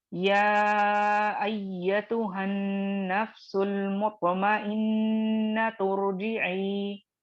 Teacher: directly را کو ملا دی، حمزۃ الوصل کو ڈراپ کر دی